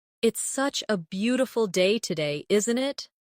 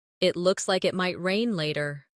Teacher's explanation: Notice how the intonation rises at the end, making it sound like a friendly remark.